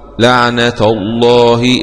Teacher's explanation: اسم الجلالة اللام مغلظة لأنها جاءت بعد حرف مفتوح